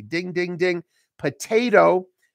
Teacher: in American English we say potato the the the that second T becomes a voice D